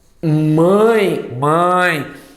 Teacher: é um ditongo decrescente Além disso ele é nasal